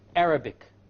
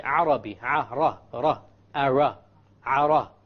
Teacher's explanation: The English R comes from the middle of the tongue, and the Arabic ra comes from the tip of the tongue.